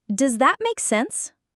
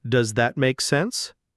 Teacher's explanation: It's a question, so the intonation should rise at the end. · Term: upward lift